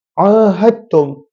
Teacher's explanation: Selepas ha, adanya huruf dal, ada huruf dal. Tapi dal tu kita tak baca, walaupun ada dalam tulisan. Dal itu kita tak baca, kita masukkan dal itu dalam huruf selepasnya. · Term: idgham